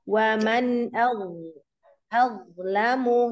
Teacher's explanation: huruf dho tebalkan ya, pangkal lidah naikkan lalu sisi lidahnya tempelkan ke gigi geraham atas ya